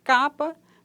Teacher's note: o c oclusiva velar desvozeada